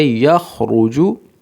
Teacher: را کو موٹا پڑھیں گے کیونکہ را کے اوپر پیش ہے